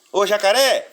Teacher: jacaré é uma palavra que tem a última sílaba tônica